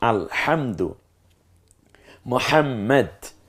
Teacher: হাটা গলার মাঝখান থেকে চাপ দিয়ে উচ্চারিত হয়, হা, একটু ফ্যাস ফ্যাসা আওয়াজ হবে, হা।